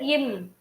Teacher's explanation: இம் அப்படின்னு சொல்லும் போது மேலிதழும் கீழ் இதழும் இணையுது